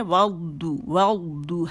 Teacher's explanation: دو ہونٹ مکمل گول ہوں گے